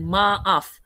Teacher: Maaf ada hentian glotis kan kat tengah